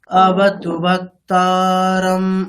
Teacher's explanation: করা যাবে না একবার দেখো অবতু বক্তা এখানে অবতু ব তাহলে তু ব দুটো যেহেতু হ্রস্ব তাহলে অবতু ওখানে কোনো রকম টাইম নেওয়া যাবে না